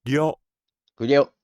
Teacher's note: the tongue goes forward, touches the roof of the mouth, and then immediately pulls back into the throat